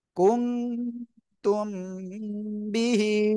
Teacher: নাকের ভিতরে নিয়ে গোপন করে গুন্না করে পড়বেন